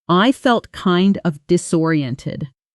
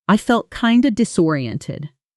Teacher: The phrase, kind of, almost always shrinks in fast speech to kinda